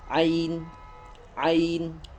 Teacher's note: Perlu diketahui ain itu makharijul hurufnya selamanya tidak ada keluar dari yang namanya khaysum ya. Tidak ada selamanya keluar dari hidung. Yang banyak salah atau yang banyak salah cara pengucapan makharijul huruf ain itu semuanya keluarnya dari hidung ya.